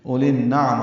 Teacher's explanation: لام کے بعد ایک یا ہے وہ بھی نہیں پڑھیں گے، آگے الف بھی نہیں پڑھیں گے، لام بھی نہیں پڑھیں گے. ادغام شمسی ہوگا، لام کو نون سے ملانا ہے، غنہ بھی ہوگا